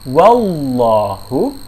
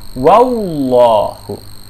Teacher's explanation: Kesalahan yang paling sering adalah munculnya bunyi huruf waw. Jadi membaca wallahu dibacanya wallahu.